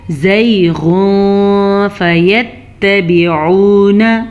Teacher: یا لین کا قانون یہ ہے کہ یا لین نرمی سے پڑھی جاتی ہے، بغیر لمبے کیے پڑھی جاتی ہے